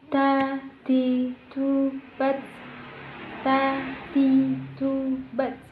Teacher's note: ada udara yang mengalir ketika kita melafalkan huruf tersebut · sifat al-hams, kita membaca dengan mengeluarkan udara kita, mengalirkan udara kita. Contohnya ketika kita membaca ta, bukan ta.